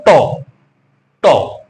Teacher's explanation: যে ট জি জীভার অগ্রভাগ এই যে মূর্ধার অর্থাৎ মাঝখানে যে তালু এবং কন্ঠের মাঝখানে যে অংশটা একদম উঁচু জায়গায় সেখানে স্পর্শ করে উচ্চারিত হচ্ছে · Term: মূর্ধন্য ধ্বনি